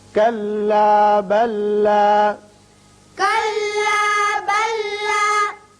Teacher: كَلَّا بَلَّا. یہاں لام ساکن کے بعد لام مشدد ہے، اس میں ادغام ہو جائے گا